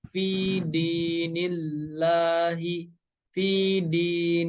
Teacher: Huruf nun berharokat kasroh bertemu dengan lafaz Allah, maka cara membacanya harus dibaca tipis dengan lafaz Allah dibaca menjadi lah.